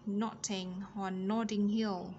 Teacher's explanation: T trung âm nằm giữa hai nguyên âm, đọc là D theo giọng của anh